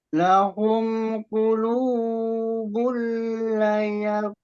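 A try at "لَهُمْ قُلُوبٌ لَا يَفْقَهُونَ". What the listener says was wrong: Lahum qulubul la, jangan lahum qulubul la yafqahu. La-nya itu hilang panjangnya.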